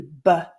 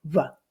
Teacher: the plosive sound would be b, whereas a fricative would sound more like v